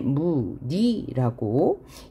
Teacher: 그 다음에 무늬 할 때도 이 무늬의 니는 자음을 첫소리로 가지고 있기 때문에 무니라고 이모음으로만 발음해야 되고요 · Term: 단모음 이